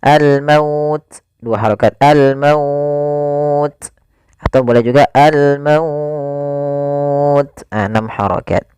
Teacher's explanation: mad lin yang panjangnya adalah kita boleh panjangkan 2 harokat, boleh 4 harokat, dan boleh pula 6 harokat